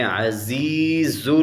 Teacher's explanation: زا کے اوپر سیٹی نکالیں گے